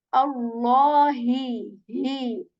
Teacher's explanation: This ha comes from the lower portion, the lower portion which is near to our chest. And that is how we hear this hemming sound in ha.